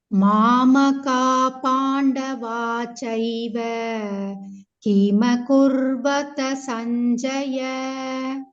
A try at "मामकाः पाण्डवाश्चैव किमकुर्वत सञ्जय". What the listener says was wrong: Yeah, you said it, you told right, but Pandavash-chaiva. Wash with them. Wash, not Vachaiva. Mamaka Pandavash-chaiva.